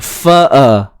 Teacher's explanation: Hamzah ni kena kekalkan bunyi dia, biarkan ianya betul-betul datang daripada pangkal kerongkong kita.